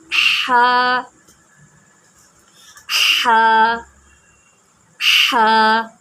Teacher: हा जो है वो हमारे हलक के दरमियान से निकलता है